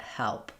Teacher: Your jaw for the E vowel is kind of open part way. It's a front vowel. The front of my tongue is down and the back of my tongue is lifted.